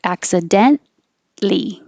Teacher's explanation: you don't say the t before the l